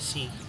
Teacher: vokal yang dihasilkan dengan bibir tidak membulat seperti I dalam kata si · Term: bunyi tidak bulat